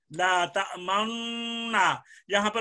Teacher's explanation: آپ نے اشمام ضرور کرنا ہے، ہونٹوں کو گول ضرور کرنا ہے، لا تأمنا، یہاں پر میں نے ہونٹوں کو گول کر لیا ہے.